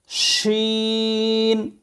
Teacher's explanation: জিহ্বার মাঝখান উপরের তালুর সঙ্গে লাগাইয়া শিন উচ্চারিত হবে